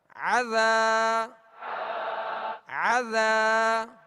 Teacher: عین کو درمیان حلق سے ادا کرنا ہے تاکہ حمزہ کی آواز اس میں پیدا نہ ہو